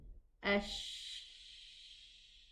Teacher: No vocal cord vibration, but there's a lot of air allowed to run. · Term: whispering character